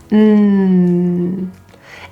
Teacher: the tip of your tongue and even a bit of the sides are closing the door of your mouth or your oral cavity